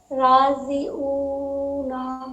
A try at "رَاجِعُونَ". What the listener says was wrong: راضی نہیں راجی بولے بولیے راجی آدھا آدھا توڑ کے عین نکالیے راجعون